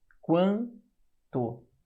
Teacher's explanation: o U é mais fraco do que o A. O U é a semivogal e o A é a vogal. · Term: ditongo crescente